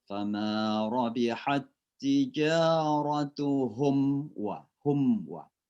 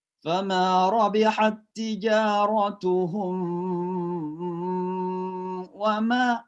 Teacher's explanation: Izhar itu artinya jelas, syafawi artinya di bibir. Jadi cara membaca mim sukun di sini jelas di bibir. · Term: izhar syafawi